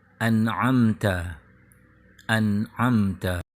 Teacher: Bunyi N di suku kata an dibaca harus jelas atau izhar, disebabkan huruf setelahnya adalah huruf ain, yaitu huruf izhar.